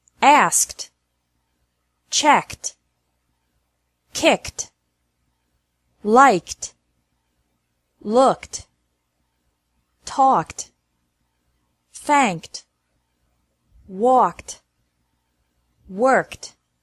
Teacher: e d is pronounced like t after verbs ending with a k sound